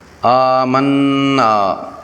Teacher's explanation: اس کے علاوہ نون پر شد کی وجہ سے اس پر غنہ بھی ہوگا۔ نون کی آواز کو ناک کے بانسے میں 2 حرکات کے برابر لمبا کر کے ادا کرنا ہے۔ نون کی زبر اور آخری الف سے یہ مد اصلی ہے، اسے بھی 2 حرکات کے برابر لمبا کرنا ہے۔